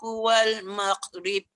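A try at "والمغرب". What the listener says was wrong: Maghrib. Dia tak boleh mau. Dia jangan lepaskan tak boleh. Ghain tak ada lantunan. Wal maghrib. Ba je lantun.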